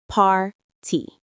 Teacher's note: The stress is on the first syllable, par.